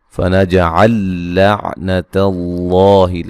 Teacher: لفظ اللہ کو موٹا ادا کریں گے